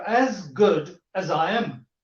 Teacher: But instead of saying Z in the word as, he said instead of saying the sound Z, he said the sound, or he pronounced the sound S